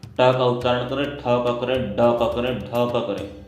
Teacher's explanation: री, ट, ट, आप जहाँ पर आपकी जिह्वा टच करती है ट को बोलते हुए, ट का उच्चारण करें, ठ का करें, ड का करें, ढ का करें, तो जब उच्चारण के समय जिह्वा जगह पर टकराती है वो स्थान आपका मूर्धा है। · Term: मूर्धन्य वर्ण